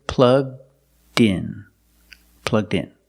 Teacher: The D sound at the end, plugged, link with the next word, in. So you hear din, din.